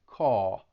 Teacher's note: Because generally, when you say call, the tongue is going to come up to the top part of your mouth at the end of the word because it's a dark L, and you'd hear that ul sound at the end, call. But with the New York accent, it would sound like caw, and your tongue is actually laying flat at the bottom of your mouth